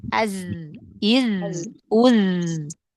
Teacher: Kalau yang mendesis itu hanya huruf sin. Kalau huruf zai kan dia bukan mendesis karena dia jahar. · Nafas yang dialirkan. Tapi kalau zai dia seperti suara lebah. Kenapa? Karena dia suara yang dialirkan.